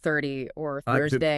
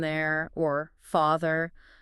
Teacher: the difference between the unvoiced sound in words like 30 or Thursday. The TH sound. Yeah, versus the voice sound in there, or father.